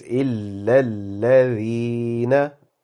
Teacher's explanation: Dal again is a soft sounded alphabet, so your tongue touches your top teeth very slightly, very softly, okay?